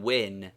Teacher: W in win, French OU. It is merely a U pronounced as a consonant.